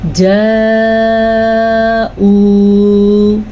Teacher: یہ مد 5 سے 6 سیکنڈ تک لمبا کر کے پڑھنا ہے اس کو، پھر واؤ مدہ پڑھنا ہے۔